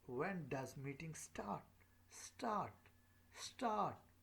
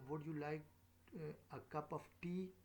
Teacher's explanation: we tend to use this rising intonation pattern when we are asking question so the pitch of our voice tends to go up